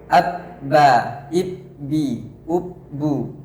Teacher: Makharijul huruf ba itu adalah menempelkan kedua bibir kita, atau makhrajnya adalah di bibir. Sifat huruf ba yang pertama adalah jahar atau tidak ada aliran nafasnya.